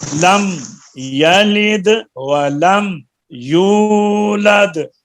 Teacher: لم میں میم میں آواز ہلے نہیں